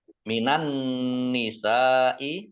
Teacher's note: Sin fathah alif mat tabi'i tetapi karena bertemu dengan huruf hamzah dalam satu kata maka menjadi mat wajib muttasil. Mat wajib muttasil harus dibaca panjang 5 harokat. · Nun tasdid dibaca mendengung atau gunnah ditahan 2 harokat.